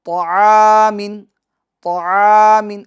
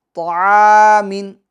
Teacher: اسی طرح طعامن، طعامن، اگر آپ یوں پڑھیں گے طعا، یعنی ہونٹوں کو گول کر لیں گے تو یہ درست نہیں ہے، بلکہ طعامن، بغیر ہونٹوں کو گول کیے آپ کو حروف مستعلیہ کو پور کرنا ہے۔